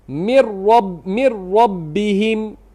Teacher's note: Kita tidak lafazkan nun dan tidak ada ghunah. Tidak ada tidak ada ghunna. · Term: idgham tanpa ghunah